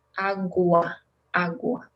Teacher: Remember, agua, we pronounce UA like separated.